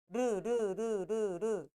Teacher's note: 유음은 여러분이 코를 잡고 하면 르 코가 안 울려요